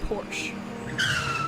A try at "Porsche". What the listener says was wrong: in the german language danka right there's an e at the end porsha there's an e at the end